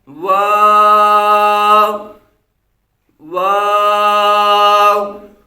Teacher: ये दोनों होठों की गोलाई से अदा होता है · اور آگے ہے واو، یہ واو جو ہے یہ دونوں ہونٹوں کی گلائی سے ادا ہوتا ہے، دونوں ہونٹوں کو گول کر کے اس واو کو جو ہے وہ ادا کرتے ہیں۔